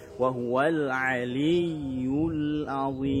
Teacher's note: Ya, perhatikan nih, aliyyul azim, situ ada ya sukun, ya bertasydid, maksud kami ya bertasydid, berikan nabrah ya, penekanan suara, lalu berikan sifat rokhawah dari huruf ya-nya